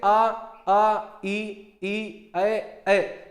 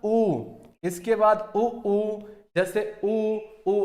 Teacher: इसमें क्या होता है, आपका होंठ जो है ये गोलाकार हो जाता है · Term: व्रतमुखी